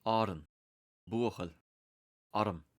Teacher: the schwa, is the last short vowel, and it appears in unstressed syllables in both Irish and English